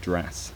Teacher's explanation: the girls around me seemed to pronounce words like dress more like drass